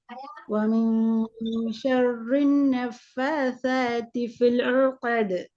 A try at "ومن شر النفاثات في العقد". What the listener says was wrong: சரியா வரணும், வரல. ஃபில் ஊ தான் வருது. ஃபில் ஊ ஊ தான் வருது. ஃபில் லாம் உச்சரிங்க. ஃபில் உகது. ஐனம் மாறுதீங்க, சாட உச்சரிப்பு வரக்குள்ள ஐன் மாறப்படாது, அதை நினைவு பார்த்துக்கோங்க.